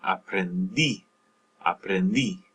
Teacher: So with these preterite tense, preterite verb forms, in many of these, the yo form and the usted, el, ella form, you're going to be stressing the final syllable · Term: stress that syllable